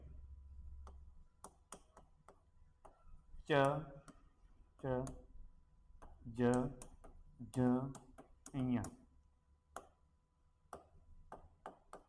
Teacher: च वर्ग का जो उच्चारण है वो तालु से होता है